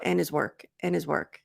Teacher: probably most of the time, Americans will reduce the D